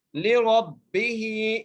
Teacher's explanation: لِرَبِّهِ, لام کے نیچے زیر ہے, را کے اوپر زبر ہے, را کو موٹا کر کے پڑھنا ہے. را کو با سے ملانا ہے.